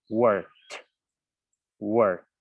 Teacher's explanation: Entonces la regla nos dice, como termina en un sonido que es voiceless, hay que colocarle el t sound al final para que quede en pasado